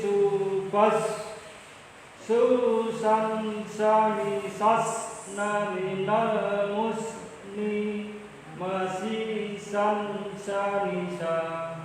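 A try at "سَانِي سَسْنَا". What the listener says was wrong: Oke, tapi yang apa namanya susang sanisasna itu juga tetap sama Pak. Jadi bukan dipotong atau dipantulin. Susang sanisasna bukan gitu, tapi sanisasna tetap desisnya tetap ditambahin. Sanisasna.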